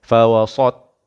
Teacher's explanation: Fawasat itu bunyi sad, bukan sin dah. Ni sautna, kedepankan sikit mulut untuk memberatkan bunyi pada huruf ta. Dan ada qalqalah.